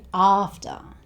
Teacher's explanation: So 'ah' at the beginning. 'Ah', open your mouth. And the schwa sound at the end.